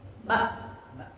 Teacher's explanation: hamzah yang disukun saat diucapkan kedua pita suara merapat atau tertutup sehingga tidak tersisa sedikit pun ruang untuk lewatnya suara